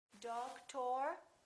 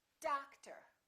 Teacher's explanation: we stress the first syllable we reduce the second therefore these two o's are also going to be completely different